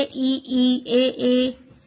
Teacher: अग्र स्वर, जिन स्वरों के उच्चारण में जीभ का अग्र भाग काम करता है